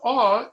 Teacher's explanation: your mouth opens up it's a little less tense okay the vowel is formed in the center of the mouth